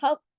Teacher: कॉफ जो है तशदीद के साथ है, सख्ती से जोड़ना है, हक, क्योंकि 2 कॉफ है, दोनों कॉफ को पढ़ना है।